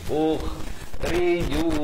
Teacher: Kha di hujung kerongkong ni